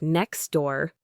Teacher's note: with the T sound in next almost disappearing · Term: elision